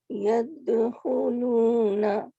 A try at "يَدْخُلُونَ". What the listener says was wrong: ٹھیک ہے، نا کو لمبا نہیں کرنا. يَدْخُلُونَ